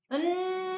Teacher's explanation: 통로는 막혀 있고 코로 공기를 내보내는 소리